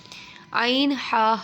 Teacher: عین ہا حلق کے درمیان والے حصے سے